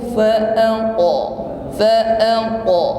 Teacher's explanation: huruf qaf sukun maka juga mengeluarkan bunyi qalqalah, memantul. Namun sekali lagi bunyi qalqalah atau pantulannya ini sama sebagaimana huruf ta, tebal.